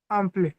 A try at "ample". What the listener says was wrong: It's not arm play, it's up play, up play.